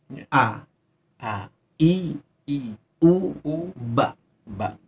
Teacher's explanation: Hamzah dan ha itu menempati pada aqsal halqi, di pangkal tenggorokan.